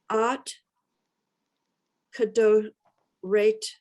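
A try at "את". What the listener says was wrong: Yes, but it's et, not at. It's a 3 dots.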